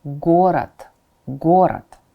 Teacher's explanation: Again, it ends with d, but rather than pronouncing it as d, you say it as t at the very end of a word